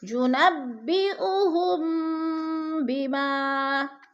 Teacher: ينبئهم، ہم پہ جو ہے میم ساکن کے بعد حرف با آ گیا ہے تو ادھر ہے اخفاء شفوی، یعنی غنہ کریں گے، تھوڑا سا ناک میں آواز کو لے کر جائیں گے